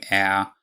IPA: ɛə